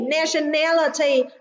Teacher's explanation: nationality trọng âm rơi vào âm tiết thứ 3